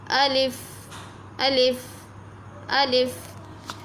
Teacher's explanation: आपका जो अलिफ है ये बहालत जो मद्द जोफ़े दहन जो मैं आपको बता चुकी हूँ, मुँह के खाली हिस्से की हवा से ये अदा हो रहा है। इसको ना हम खींच कर पढ़ते हैं ना हम झटका देकर पढ़ते हैं।